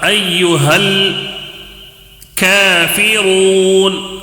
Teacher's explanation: یہاں پر بھی کاف کو بھی تھوڑا 1 الف کھینچ کر پڑھنا ہے